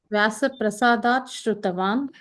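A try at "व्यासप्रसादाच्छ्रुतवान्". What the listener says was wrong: Yeah, but it's combined together, so there's no sha there. It becomes a cha.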